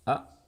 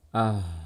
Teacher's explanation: Kalau di hamzah, suaranya berhenti, tersentak. A, gitu ya. Tapi kalau di H, suaranya alirkan. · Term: huruf H